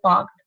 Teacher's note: So that means in any word, okay, for example, this is a word parked. So if k or any other voiceless consonant is coming before ed, so ed would not be pronounced as d, rather it would be pronounced as t